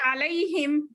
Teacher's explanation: हुर्फे लीन को जरा कम खींचना बेटे